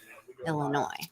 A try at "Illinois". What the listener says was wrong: No, it's not Illinois. It's Illinois. Silent S.